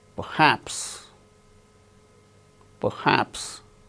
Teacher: R is not uttered because it is followed by h in the word perhaps